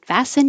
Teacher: fast fast hold the tongue in the T position fast sin you don't hear the T at all